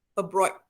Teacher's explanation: Dia O bukan O yang penuh lah. O separuh saja. Dan D tu biasalah abroad.